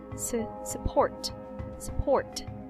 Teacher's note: the first syllable is the unstressed which makes it a schwa sound